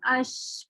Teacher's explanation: بہت تھوڑی سی جگہ ہے جہاں سے آواز نکل رہی ہے ، تو اس کو ہم کہیں گے تنگ راستہ۔ تو یہ